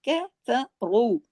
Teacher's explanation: را ہیوی پڑھا جائے گا، 2 حرکات کھینچے گا